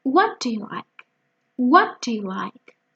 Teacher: See that what and like are much more easily heard than do you. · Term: sentence stress